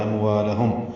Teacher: اموالہم میں میم ساکن کے بعد واو آنے کی وجہ سے اظہار ہوگا، والف مدہ ہے اور دوسری میم بھی ساکن اس پہ اظہار ہے، اموالہم۔